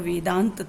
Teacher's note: जैसे अभी हमने बताया था यहाँ पर वेदांत था ये, तो इसमें छोटा आ दोनों तरफ ह्रस्व थे, लेकिन जब इनका मेल हुआ तो मेल होने से ये दीर्घ आ बना। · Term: दीर्घ संधि